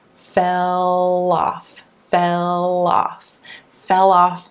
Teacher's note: we have that dark L linking over in front of the word off making off sound like loss loss fell off fell off fell